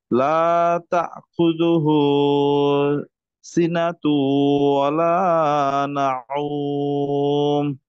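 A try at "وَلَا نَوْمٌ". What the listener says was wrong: নাওমটা গলার মধ্যে যাবে না, হ্যাঁ, স্বাভাবিকভাবে।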